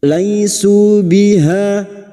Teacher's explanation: Laisu biha, ha fathah diikuti alif 2 harokat mad tabi'i